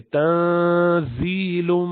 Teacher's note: نون کے اوپر ساکن ہے، اس کے بعد زا آ رہا ہے تو اخفا کریں گے. تنزیل، یا سے پہلے زیر ہے زا پر تو یہ مدی ہو گیا، یا مدیہ ہے.